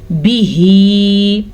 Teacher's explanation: یفرقون بیہی بعض لوگ اس کو پڑھتے ہیں بیہی. اب ہا کے نیچے تو کھڑی زبر ہے اسی لیے ہم کھینچ کے پڑھیں گے جبکہ با کے نیچے زیر ہے تو اسے ہم کسی بھی صورت میں کھینچ کے نہیں پڑھیں گے